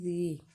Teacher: یا سے پیچھے زیر ہونے کی وجہ سے مد اصلی ہے، ایک الف کے برابر اس کو کھینچ کے پڑھیں گے